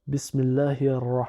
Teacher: Donc, ensuite, on a un alif qui ne se prononce pas. On a un lemme qui ne se prononce pas non plus parce qu'il est suivi d'une lettre solaire qui est dédoublée par la shadda. Donc, on va faire la liaison avec le premier ra.